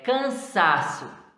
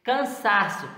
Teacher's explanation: Cansaço, paroxítona, porque está na penúltima sílaba, o sa.